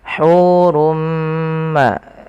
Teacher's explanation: bunyikan dengan suara Nun yang dimatikan asalnya hurun bertemu dengan mim tanwinnya masuk kepada huruf mim dan diganti bunyinya menjadi Bunyi mim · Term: Idgham bighhunah